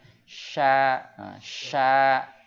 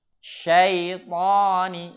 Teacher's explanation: Itu tafasyi, menyebar. Udaranya keluar menyebar.